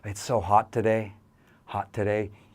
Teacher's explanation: You can hold that T sound.